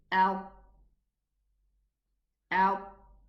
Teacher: the whole tongue rises and closes against the whole of the upper palate. Against the teeth, the upper teeth, all around. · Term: itbaq